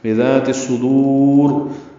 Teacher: بذات الصدور صاد پر پڑھیں گے، دال باریک پڑھیں گے، را پر پڑھیں گے